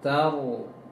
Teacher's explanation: Penting ta jangan terbaca to nantinya karena menempelkan huruf ro.